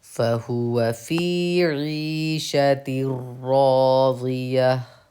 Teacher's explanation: یہاں پہ را پہ تشدید ہے، آپ کو سختی کر کے پڑھنا ہے، سختی 2 حرف کے تاخیر کے برابر ہونی چاہیے